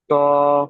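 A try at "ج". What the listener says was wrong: জি না, তো নয়, জ। আমি যেখান থেকে বলছি এখান থেকে পড়েন।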